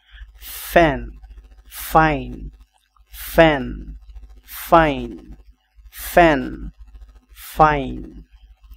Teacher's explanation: ইস্ট ইট ইস্ট ইট ইস্ট এফ এফ এফ সাউন্ডটা একটু different আপনার এফ উপরের দাঁত আর নিচের ঠোঁটটা বাতাস বের করার মত একটা সাউন্ডস হবে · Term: সাউন্ড এফ